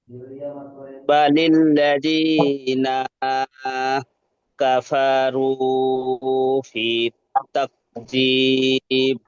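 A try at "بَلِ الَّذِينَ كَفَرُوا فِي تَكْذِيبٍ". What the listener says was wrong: জি, এই নাটা একটু টান হয়ে যাচ্ছে, এটা টানটা টান দেবেন না। ফিটা ফিটা টান দেন, ফিটা হরফে মাদ্রা আছে। বালিল্লাযিনা কাফারু।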